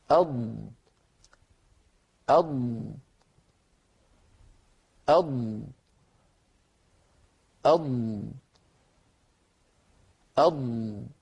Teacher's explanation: الضاد صوتها فيه امتداد، وليس من الضروري أن يكون امتداده كامتداد صوت أس وأش وأف